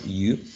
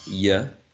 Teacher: you can have a long u, right? You, or you can have a schwa, ya, and even some singers, some rap singers may say yo, right?